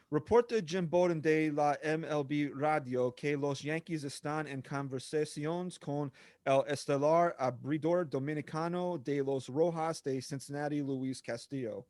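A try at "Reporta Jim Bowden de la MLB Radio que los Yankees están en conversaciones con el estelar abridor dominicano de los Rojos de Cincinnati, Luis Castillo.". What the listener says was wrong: You got to learn how to roll the R's, but that was actually very good.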